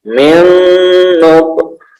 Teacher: Idgham biguna ya, idgham biguna, nun sukun bertemu dengan nun dimasukkan ya, jadi ditekan